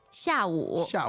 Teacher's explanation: the tones there are fourth and third fourth and third